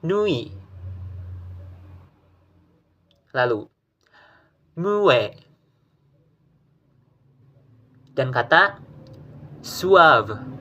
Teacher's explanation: Untuk pengucapannya yang pertama, yaitu membentuk suara U dan dilanjutkan dengan bunyi W.